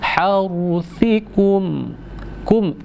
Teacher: Ketika mim mati bertemu dengan alif, maka dia menjadi izhar syafawi, dibaca jelas dengan kedua bibir tertutup, syafatun kedua bibir tertutup.